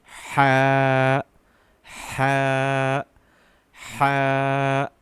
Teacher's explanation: ha is a deep sound which needs to come from the throat